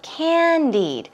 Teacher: Stress goes on the first syllable